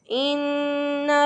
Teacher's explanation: तो इन्ना नून मुशद्दद है, एक अलिफ के बराबर गुन्ना करते हुए हमने नाक में नून की आवाज़ को ठहराते हुए